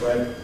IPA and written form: hwen (when)